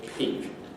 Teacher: you should be able to hear a little puff of air